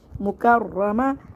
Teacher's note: اور را کو موٹا بھی پڑھا کیونکہ را ساکن سے پہلے زبر تھا کر، اس لیے بھی موٹا پڑھا.